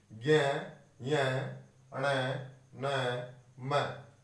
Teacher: इनको बोलते समय प्राणवायु मुख के साथ साथ कहां से निकल रही है? नाक से भी निकल रही है। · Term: अनुनासिक वर्ण